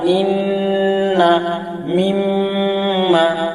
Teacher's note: 17 নম্বর মাখরাজ নাকের বাঁশি হতে গুন্না উচ্চারিত হয় বা গুন্না বাহির হয়